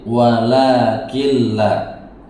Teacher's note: huruf tersebut masuk ke dalam huruf lam tetapi tanpa bunyi sengau, maka disebut idgham bila ghunah. Mim sukun atau tanwin ketika bertemu lam, dibaca tanpa bunyi sengau , digabungkan tanpa bunyi sengau, idgham bila ghunah.